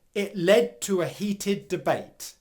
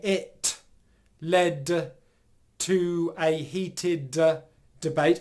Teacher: at no stage am I releasing these plosives at the end of the words like I would if they were at the beginning of words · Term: pausing airflow